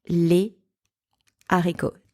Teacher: because the H from the word haricot is an aspirated H, it blocks the liaison. So I can't say les haricots, no liaison.